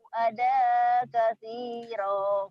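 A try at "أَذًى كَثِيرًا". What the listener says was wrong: adanya jadi adang ya, ikhfa, tanwin ketemu kaf.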